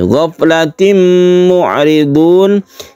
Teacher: kita sebut dengan idgham bi gunnah, tanwin bertemu dengan mim. Kemudian mu'ridun adalah mad adid lisukun.